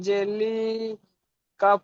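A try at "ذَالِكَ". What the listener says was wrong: লিকা, লিকা, এ দুটো টান হবে না, জালিকা। লামের ইজরাটা করেন তো, আপনি লামটা টান দিচ্ছেন, লামের ইজরাটা করেন।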